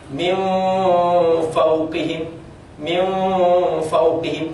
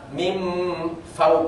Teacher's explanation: Fa misalnya nun mati min fauqihim min fauqihim jadi di sini gigi atas langsung nginjak di bibir bawah min fauqihim ada orang mim Fau itu salah karena disebut sama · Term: alikhfa